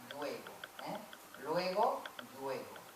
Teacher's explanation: La palatalización de la L inicial.